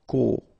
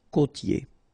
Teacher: here you get this O, accent circumflex. You tend to insist a little bit more on it, so it's a bit lower.